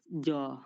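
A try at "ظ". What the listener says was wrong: অনেকের উচ্চারণটা জ হচ্ছে, তো এর উচ্চারণটা এইভাবে হবে। জিহ্বার আগাটা, ওই যে আমরা সা বলছিলাম না, জিহ্বার আগাটা যে উপরের দাঁতের আগায় লাগিয়ে দিয়েছিলাম, উপরের দাঁতের ধারালো অংশতে, ওই এই এই রটা বলার সময় জিভের আগাটা উপরের দাঁতের আগায় লাগিয়ে দিবেন, উচ্চারণ হয়ে যাবে র।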